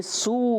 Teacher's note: واو مدہ ہے، سین سیٹی کے ساتھ ادا ہوتا ہے